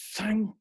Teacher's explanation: I'm actually biting my tongue very gently. It's touching everything, and I'm blowing.